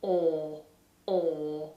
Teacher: in british english this is a huge space inside the mouth the lips are rounded and the vowel doesn't move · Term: or vowel, OR vowel